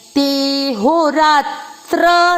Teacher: चौथा चरण ते के बाद अवग्रह। अवग्रह के कारण आपको ते की मात्रा को लंबा खींचना है।